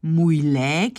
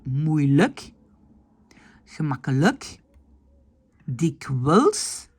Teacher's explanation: quand le IJ est en fin de mot, on le prononce comme E, comme dans le mot le